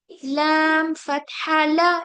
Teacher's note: लाम में आप बिल्कुल नाक से आवाज नहीं निकालेंगे